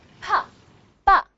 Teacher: The lips are closed to stop the air completely · So you say p yeah that you can feel it if you put your hand in front of your mouth you can feel there's actually a plosion of air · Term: stops